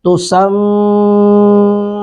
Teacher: میم پر شد ہو تو غنہ کرتے ہیں، ہونٹوں کو ملا کر ناک میں آواز لے جائیں گے